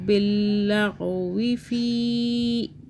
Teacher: چھوٹی مدہ 3 الف کے برابر کھینچا